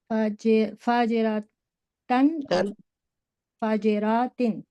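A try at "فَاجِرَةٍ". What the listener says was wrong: खींचना नहीं है सिस्टर, फाजिरतिन।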